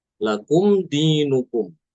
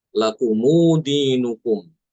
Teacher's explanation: mensilahkan mim jamak ya artinya menambahkan wawu sukun setelah mim jamak. Jadi mim jamaknya tidak disukun tapi diberi harakat domah.